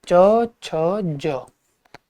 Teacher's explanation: कंठ या कोमल तालु के बाद सीधा कठोर तालु आता है, जिसकी ध्वनियों को तालव्य कहा जाता है